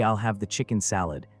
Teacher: make sure to stress the word chicken and salad equally